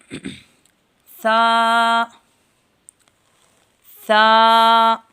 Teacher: زبان کی نوک جب سامنے کے دو دانتوں کے سرے سے لگے تو سا ادا ہوتا ہے